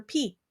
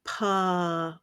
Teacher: it's just a puff of air you don't need the PA with the voice on